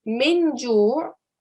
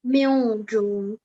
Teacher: if the letter after the noon sakin is not one of our throat letters, which in this case it isn't, because jim is not one of our throat letters, we are going to hide the sound of the noon. So rather than saying min ju', you're going to end up saying mil ju'.